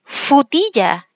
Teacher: aquí vemos que reduce este grupo consonante